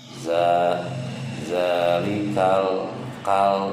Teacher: Hukum bacaan tajwidnya adalah alif lam qomariyah. Jadi lamnya dibaca jelas ya